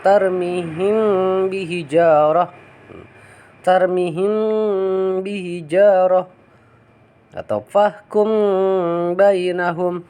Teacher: Ketika mim mati bertemu dengan huruf ba, maka dibacanya si mimnya disamarkan dan didengungkan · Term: ifa safawi